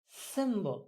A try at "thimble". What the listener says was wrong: No, it's not an S, it's a th. Thursday, thimble.